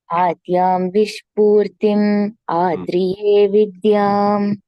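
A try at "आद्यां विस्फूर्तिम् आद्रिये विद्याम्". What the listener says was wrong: இது இசச் இல்ல, எஸ் only, விஸ்பூர்த்தி, விஸ்பூர்த்தி. Okay, விஸ்பூர்த்தி.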